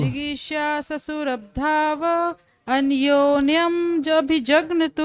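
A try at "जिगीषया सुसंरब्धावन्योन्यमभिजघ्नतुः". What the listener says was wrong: देखिए राव नहीं है हलंत है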